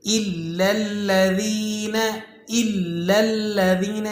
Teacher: دونوں لام پر جو تشدید لگی ہوئی ہے دونوں کو جماؤں کے ساتھ اور ذرا مضبوطی سے ادا کرنا ہے۔